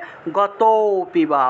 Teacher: এই লুপ্ত অ এর উচ্চারণটা মূলত আগের যে অক্ষরটা থাকবে সেই অক্ষরটাকে একটু টান দিয়ে উচ্চারণ করলেই লুপ্ত অ এর উচ্চারণটা চলে আসে।